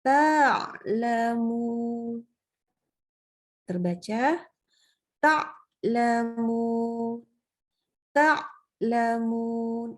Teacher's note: Jadi putus suaranya tuh ada selaknya suaranya. Terpotong. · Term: syiddah